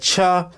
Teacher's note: छ देखिए घर्षण के साथ बाहर निकल रहा है